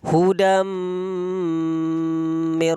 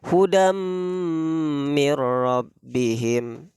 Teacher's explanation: jadi digunnahkan, ditasydidkan, dimasukkan dua getaran. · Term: idgham bi gunnah